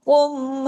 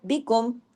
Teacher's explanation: एक तरफ कुम हैवी और दूसरी तरफ बिकुम ये काफ बारीक